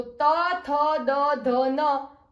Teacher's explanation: त वर्ग तो त, थ, द, ध, न वो दंत व्यंजन है और वो दांतों से बोले जाते हैं, दंत से। प वर्ग प, फ, ब, भ, म जो ओष्ठ व्यंजन है, जो ओष्ठ से बोले जाते हैं।